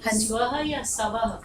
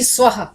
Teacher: व के पीछे विसर्ग हा स्व ह आवाज आनी चाहिए स्व या सव नहीं स्वः आधा साय आधा स आप पूरे